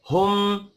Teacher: मीम मुशद्दद पर गुन्ना करना है।